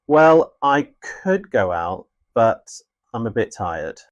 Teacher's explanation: The fall and rise intonation used for hesitation, uncertainty, or contrast.